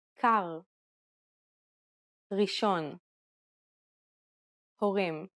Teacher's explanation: Unlike the English R, which is pronounced with the tip of the tongue at the front of the mouth, the Hebrew R is pronounced using the back of the tongue with a slight roll. You can think of it like gargling air at the back of your throat.